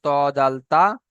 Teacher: জিভের আগাটা সামনের উপরে দাঁতের গড়ার সাথে লাগিয়েছে